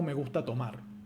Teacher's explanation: tenemos un acento que se escucha como más fuerte que es el de tomar ya que no es una frase fonológica me gusta tomar y